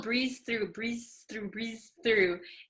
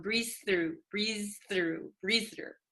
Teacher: the ZZ and the th almost become one